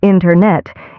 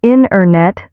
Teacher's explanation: The t sound gets softer or disappears. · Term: dropped sounds